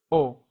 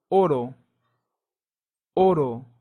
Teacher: in Spanish you don't say the little u sound at the end it's just oh